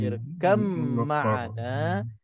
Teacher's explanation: bila ba mati bertemu dengan mim, kedua-dua huruf ini tempat keluarnya sama, maka kita tak perlu nak qalqalah, tak perlu nak sebut ba lagi, kita terus idgham masuk ke dalam mim. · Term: idgham mutajanisain kamil